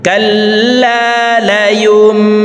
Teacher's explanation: নুন সাকিনের পর ইকলাবের হরফ একটি বা আসছে, এই কারণে এই নুন সাকিনকে এই ছোট্ট মিম দ্বারা পরিবর্তন করিয়া পড়ব। সরাসরি এই পেশওয়ালা ইয়াটি এই মিমকে ধরবে, মাঝখানে জজমওয়ালা নুন বাদ পড়ে যাবে। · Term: ইকলাব গুন্না